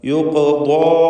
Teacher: ദാ എന്ന ദാദിൻ്റെ ശബ്ദത്തിലും അതിൻ്റെ ദീർഘാക്ഷരമായ അലിഫിലും തഫ്ഖീമുണ്ട്. സ്വരഭാരത്തോടെ ഉച്ചരിക്കുക.